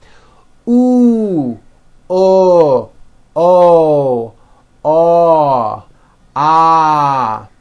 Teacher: notice how my jaw is opening on each one and also notice how my lips are coming forward all the way on the ooh sound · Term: back vowels